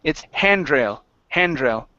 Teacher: the stress is at the beginning instead of at the end